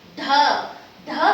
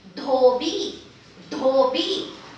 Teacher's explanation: it is dha, dental D aspirated